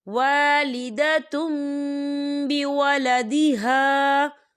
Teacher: ہم تنوین کو جو ہے میم کے ساتھ ملا کر پڑھیں گے، یعنی تا کو جو ہے ہم می سے ملا کر پڑھیں گے، اور یہاں پر غنہ بھی ہوگا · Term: اقلاب